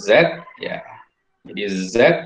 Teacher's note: Jadi Z, nah itu ada getaran di pita suara. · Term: bunyi bersuara